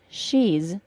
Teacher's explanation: make a contraction of the words she is and create she's the final S is pronounced as a Z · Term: Z sound